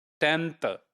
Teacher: So in 10th, the n is more, dental, you see? And it is there below the n, the dental sign, the dental symbol which is given there.